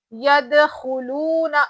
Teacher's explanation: واو مدہ ہے نا، ایک الف کے برابر کھینچیں گے، نون پہ زبر ہے، جلدی پڑھنا ہے.